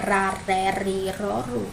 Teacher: O som fraco do R é aquele tremidinho